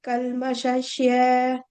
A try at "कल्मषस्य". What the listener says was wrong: ஷஷ் இல்ல ஷஸ் இருங்க சாக்கும் ஷாக்கும் வித்தியாசம் இருக்கா இங்க பாருங்க SHA SH போடுறேன் இல்லையா நீங்க லாஸ்ட்ல SHYA போடுறேன் அது SYA மட்டும்தான் இருக்கணும் அஸ்ய சொல்லுங்க